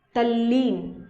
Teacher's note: तत्लीन किस में परिवर्तित हो जाएगा, तल्लीन। ये त और ल अगर मिलते हैं तो ल की ध्वनि आ जाएगी, जो ल है वही उच्चारित किया जाएगा और वही सुर रहित यहाँ पर आ जाएगा, तत् योग लीन हो जाएगा तल्लीन।